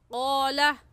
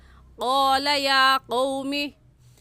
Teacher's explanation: हलक में जो हमारी लटकी हुई खाल है उसे कव्वा कहते हैं। तो इस ज़बान के आखिरी हिस्से को जो कव्वे के पास है, उस आखिरी हिस्से को ऊपर तालू यानी हलक में लगाने से क़ाफ निकलता है